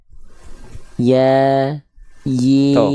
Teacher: cara melafalkan huruf ya jadi dari bagian tengah lidah kita ya dari bagian tengah lidah kita diarahkan ke langit-langit